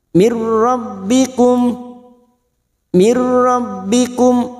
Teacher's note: dan huruf ro namanya bacaan idgam Bil gunah masuk tanpa mendengung masuk kau huruf ro tanpa mendengung tanpa ditahan · masuk pada huruf ra tanpa mendengung, tanpa ditahan.